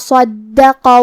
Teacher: کلمت صدقہ میں حرف الصاد حروف التفخیم میں سے ہے، لہذا ہم یہ حرف کو موٹی آواز میں پڑھیں گے. حرف دال پہ تشدید ہے، لہذا 2 حرف کے برابر ہمیں دال کو پڑھنا ہے کیونکہ تشدید کی اصلیت 2 حرف ہے. · آخری میں یہاں حرف القاف ہے. قاف کی ادائیگی زبان کی جڑ اور تالوں کے نرم حصے سے ہے